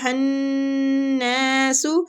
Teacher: یا کے اوپر مد ہو رہی ہے، ہنناس، نون مشدد پہ غنہ کریں گے اور نون کو کھینچیں گے، الف مد بھی ہو رہا ہے، ٹھیک۔